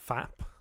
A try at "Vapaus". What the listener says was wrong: No. It's a V, not an F.